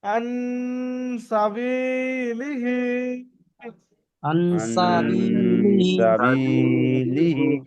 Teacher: এক আলিফ পর্যন্ত গুণনা করে পড়তে হয়